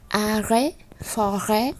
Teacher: Như vậy chúng ta không đọc âm T lên, không đọc là arrêt hoặc là forêt.